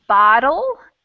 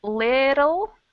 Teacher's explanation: It's almost like the R sound in some Romance languages where you have to kind of just tap your tongue really quick against the roof of your mouth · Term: flap T sound